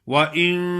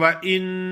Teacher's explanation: ناک میں آواز آئے، نون کی آواز صاف نہ ہو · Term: غنہ